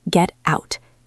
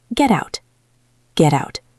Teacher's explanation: Out starts with O. We link them, so the T is now between E and O, two vowels, so the T becomes soft. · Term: flap T